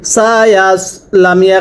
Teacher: সদটা গোল হবে উচ্চারণের সময় ঠোঁটগুলো গোল করবেন